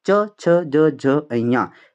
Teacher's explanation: च वर्ग के जितने भी वर्ण हैं उनको हम स्पर्श संघर्षी बोलते हैं।